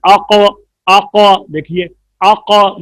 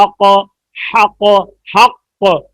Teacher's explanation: قاف میں آواز موٹی ہے, پر ہے, مفخم ہے